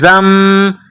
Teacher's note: را جیم زیر رج ز میم دو زبر زم زا کو میم کے ساتھ پلس کرنا ہے. میم کے اوپر تشدید ہے تو یہاں غنہ کریں گے، آواز ناک میں چھپائیں گے